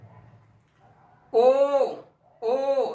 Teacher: होठ क्या हो रहे हैं, गोल हो जा रहे हैं